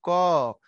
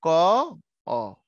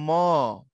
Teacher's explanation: আমি বললাম ক তার ভিতরে একটা অ চলে আসছে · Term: ব্যঞ্জন ধ্বনি